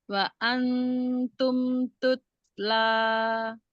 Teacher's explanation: Tutsla itu kalau di sifatnya huruf ta ada alhams ya. Tutsla ada nafas mengalir.